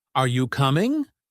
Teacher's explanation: In American English, we tend to use a rising intonation for yes or no questions